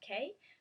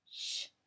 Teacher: So instead of saying K, like a hard K, we say sh, almost like the shush sound